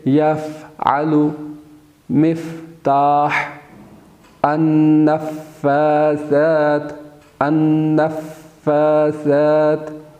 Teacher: نیچے والا جو ہونٹ ہے اس کا اندر والا حصہ اوپر کے دانتوں کے ساتھ ٹچ کرتا ہے، یعنی اوپر کے دانتوں کا کنارہ نیچے والے ہونٹ کے اندرونی حصے سے ٹچ کرے، وہاں سے فا ادا ہوتا ہے۔